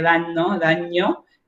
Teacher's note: Las dos nasales se asimilaron. La mi y la ni se asimilaron las dos en NN.